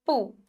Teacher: उ छोटा उ जल्दी बोल जाते हैं